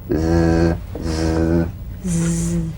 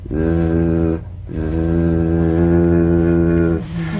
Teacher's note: The Z, cognate S, a voiced S sound fricative. The tongue rim should gently touch the upper gum ridge.